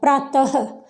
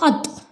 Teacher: विसर्ग का उच्चारण किस रूप में होता है, ह के रूप में होता है